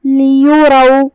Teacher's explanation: را پہ زبر ہے تو اس کا حکم ہے تفخیم، ہمیں اسے بھاری آواز میں پڑھنا ہے